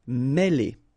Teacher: Okay, remember, accent circumflex here on the top of E, and it will give you the sound E, really opened